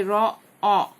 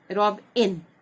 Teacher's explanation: अगर ये इसका वॉवेल का शॉर्ट साउंड है, जैसे यहाँ पे रिवर, ई है, आई का साउंड जो है वो शॉर्ट साउंड है ई, और यहाँ पे रॉ, ऑ, ओ का साउंड जो वो ऑ है, ओ नहीं है